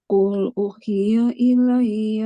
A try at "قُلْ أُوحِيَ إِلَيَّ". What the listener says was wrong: Panjang. Qul uhiya, dua harkat. Qul uhiya.